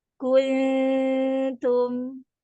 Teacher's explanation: untuk huruf-huruf yang tipis seperti ta, itu jangan kung, kung, tapi kun, pakai ujung lidah. Pakai ujung lidah menuju huruf ta.